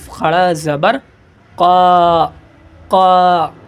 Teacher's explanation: یہ قاف یہ زبان کی جڑ سے ادا ہوتے ہیں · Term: بڑا قاف